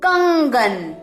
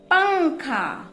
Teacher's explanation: जब हम इनका उच्चारण करते हैं तब हमारे नाक से ध्वनि निकलती है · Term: अनुस्वार